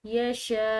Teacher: یہ الف جو ہے اس کے اوپر بڑی مد آ رہی ہے تو اس کو ہم کھنچاؤ دیں گے، لمبا ادا کریں گے